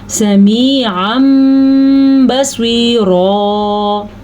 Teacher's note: صاد کو پر پڑھنا ہے، را کو بھی پر پڑھنا ہے